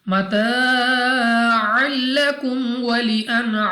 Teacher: अलिफ से पहले ज़बर खींच कर पढ़ेंगे, 2 सेकंड तक लंबा करना है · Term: अलिफ मद्दा